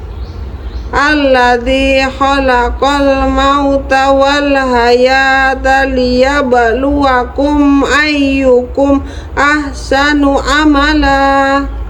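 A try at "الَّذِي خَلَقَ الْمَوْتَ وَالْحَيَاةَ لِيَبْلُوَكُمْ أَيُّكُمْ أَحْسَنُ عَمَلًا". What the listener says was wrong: Bagus. Yang kedua.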